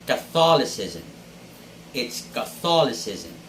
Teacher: the stress should be on the second syllable